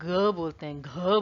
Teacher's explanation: ये आपकी सघोष ध्वनि है, तो इसलिए इनमें स्वर यंत्रों में कंपन होता है